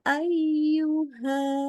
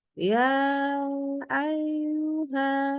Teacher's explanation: ya dan Wau tasdid itu wajib ditekan